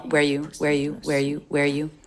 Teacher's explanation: I don't think she reduces the vowel of you. I think it's still the oo vowel. Where you. But along with where, it's flat in pitch, and it's said very quickly.